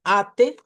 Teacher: En el portugués europeo, si la A está al principio, se hace con una A media y no con la A del español. Entonces, esto suena como ate, así hacia adelante, ate.